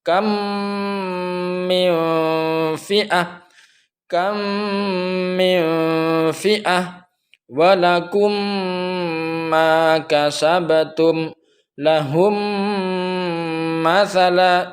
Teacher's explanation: Mutamatsilain atau mithlain di sini 2 huruf yang sama, yakni mim mati bertemu dengan mim. Cara bacanya adalah seperti menyuarakan mim ganda, mim rangkap yang ditasdidkan. · Idgham mimi di sini contohnya seperti halnya kam. Ini bibir sekali lagi tidak dibuka sama sekali, namun mim yang pertama itu dimasukkan kepada mim yang kedua, mim di depannya.